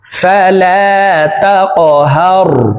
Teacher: কফ কলকলার হরফ উপরের দিকে ধাবিত করে ধাক্কা দিয়ে উচ্চারণ করব।